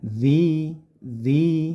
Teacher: panjangkan satu Alif atau gampangnya dzi diayunkan saja biar tidak ee kepanjangan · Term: Mad Thobi'i